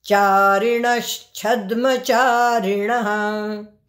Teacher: पाताल भूतल व्योम चारिणश्छद्मचारिणः. चारिण म्हणून सोडू नका, विसर्गाचा स्पष्ट उच्चार झाला पाहिजे